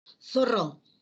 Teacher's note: Por eso es que hay una turbulencia, ¿no? El aire sale, por así decirlo, raspando, friccionando. Hay una fricción.